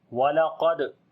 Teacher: قاف کو موٹا پڑھیں گے، دال کے اوپر قلقلہ کریں گے، درمیانہ قلقلہ ہوگا، را کو بھی موٹا پڑھیں گے، اس کے اوپر زبر ہے، الف کو یعنی کہ حمزہ کو لمبا کریں گے، اس کے اوپر کھڑی زبر ہے۔